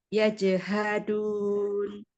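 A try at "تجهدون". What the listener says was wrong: Ayo, huruf ta. Apa huruf ya itu?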